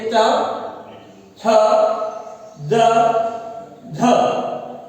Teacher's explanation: इसमें स्पर्श व्यंजनों से अधिक समय लगता है और हवा जो है वर्ण बोलने के बाद, व्यंजन बोलने के बाद, उच्चारण के बाद में संघर्षी हो जाते हैं, यानी घर्षण करती हवा निकलती है · और संघर्षी इसलिए कहते हैं क्योंकि जब हम इन व्यंजनों का उच्चारण कर लेते हैं तो ये पीछे जाते हुए संघर्ष करती है, हवा घर्षण करके निकलती है, इसलिए ये स्पर्शी भी है और संघर्षी भी है, इसलिए इनको स्पर्श संघर्षी कहते हैं।